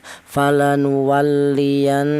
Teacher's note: Ghunah itu artinya ada suara berdengung ya. Untuk panjangnya dengung yaitu dua harakat atau dua ketukan.